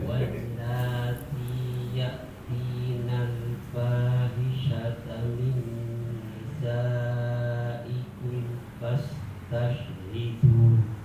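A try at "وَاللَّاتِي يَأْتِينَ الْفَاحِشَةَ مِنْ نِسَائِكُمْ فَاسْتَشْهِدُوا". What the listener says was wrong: Coba dalnya jangan desis, bisa? Dadidu. Bukan dadidu, tapi dadidu tanpa angin, tanpa desis.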